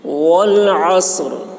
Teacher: عین کو حلق سے بولیں گے اور صاد کو موٹی آواز میں، اور وقف کرتے وقت را کی آواز نکلے گی.